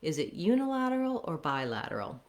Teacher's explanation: a little additional stress to highlight the contrast between uni and bi